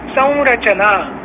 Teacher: तर या गुरुमात्रेतला पहिला आपण जो चांदणीचा नियम लिहिला आहे की अनुस्वार असलेलं अक्षर, तर संवर अनुस्वार आहे, त्यामुळे स मध्ये जरी अ हा ह्रस्व स्वर असला तरी त्याच्यावरचा जो अनुस्वार आहे त्या अनुस्वाराचा उच्चार करण्याकरता म्हणून त्याला थोडासा जास्त कालावधी लागतो आणि म्हणून संची मात्रा गुरु झाली.